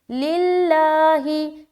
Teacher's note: आगे लिल्लाही, लाम लाम ज़ेर लिल, लाम खड़ा ज़बर ला, हा ज़ेर ही, लिल्लाही। यहाँ पर लफ्ज़ अल्लाह का लाम को बारीक रखेंगे क्योंकि उससे पहले ज़ेर आ गया